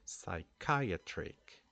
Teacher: we don't pronounce the the P sound here we start the pronunciation with the S sound